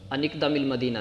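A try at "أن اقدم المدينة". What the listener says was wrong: شاباش،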